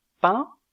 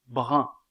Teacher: est arrondi donc la prononciation diffère au niveau de la labialité un de pain est étiré un de brun est arrondi